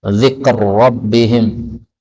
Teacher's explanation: ra ketemu ra boleh idgham dzikr rabbihim